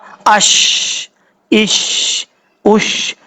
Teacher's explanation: شین جب ادا کریں گے تو آواز پھیلے گی